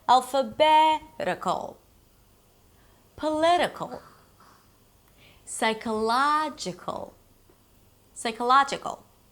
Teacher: The suffix is 'ical', primary stress one syllable before the suffix